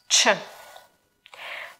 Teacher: If you learned Russian before, you know that in Russian sound ч is soft. In Ukrainian it's hard. Ч. Чемпіон, чек, матч, Чехія, сендвіч.